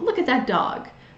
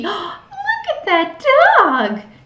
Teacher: you're going to slow down say it much higher and have that rising intonation